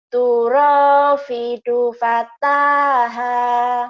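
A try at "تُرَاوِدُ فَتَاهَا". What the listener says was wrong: bukan pidu tapi widu, turawidu. Wi.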